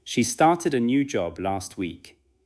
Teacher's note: The strong beats may be started, new job, and last week. The sentence should travel from one beat to the next.